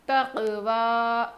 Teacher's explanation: واو کھڑا زبر وا، واو پر کھڑا زبر ہے، تھوڑا ہم کھینچ کر پڑھیں گے، حروف مدہ ہے نا.